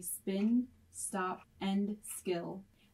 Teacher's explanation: you will not feel a puff of air when you say spin stop and skill